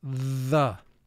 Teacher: the second sound for th is called the voiced sound for th because in order to make the sound you vibrate your vocal chords as you're making the sound